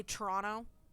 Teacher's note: i don't pronounce the second t